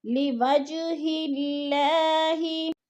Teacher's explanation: اللہ باریک پڑھا جائے گا کیونکہ اللہ سے پہلے لفظ ہا کے نیچے زیر ہے تو اللہ باریک پڑھا جائے گا۔